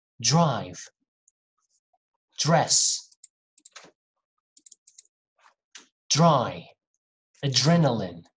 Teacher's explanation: when you see dr you're gonna hear a little bit of j for example drive dress adrenaline it can be in the middle